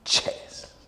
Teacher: Este sonido, que es el de la che, es una combinación de los dos anteriores. Es decir, hay un cierre total primero y luego, para que salga el aire, no se abre todo, sino solo se abre un poquito, se estrecha. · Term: africado